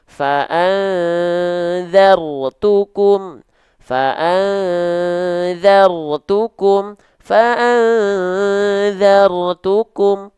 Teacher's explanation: maka di sini rnya jangan getarannya jangan banyak-banyak dalam kondisi mati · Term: takrir